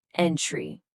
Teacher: Here, the stress hits the first syllable, entry. · Next, we have entry, which is one of a list of items included in a dictionary. Here, the stress hits the 1st syllable, entry. Then there's the verb provide, meaning to give something to somebody.